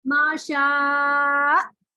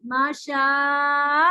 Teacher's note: अब मैं यहाँ पे क्या करूंगी, पांचवी हरकत पे जैसे ही पहुंचूंगी तो मैं हमजा पे एक झटका लगाकर उसको नबर करके रोक दूंगी, माशा, ऐसे करके माशा, तो ये हो जाएगा, इससे हमजा वाज़ेह हो जाएगा, सुनने वाले को पता चलेगा कि आखिर में हमजा मौजूद है।